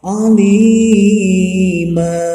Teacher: di mana mad tabi'i atau yang mad asli berakhiran dengan tanwin kemudian diwakafkan atau berhenti, maka bunyinya tidak n jadi a. Ini harokatnya 2 harokat. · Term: mad iwad